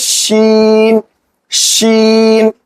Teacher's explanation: इसमें जुबान के बीच का हिस्सा तालू में लगाएंगे।